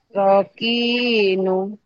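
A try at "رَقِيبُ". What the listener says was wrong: rokibu. Titiknya di bawah. Rokibu. Rokibu.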